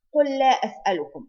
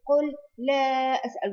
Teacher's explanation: You merge both lam together.